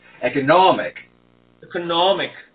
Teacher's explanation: it's one of those number 4 vowels that has to be nice and big, even though it's fast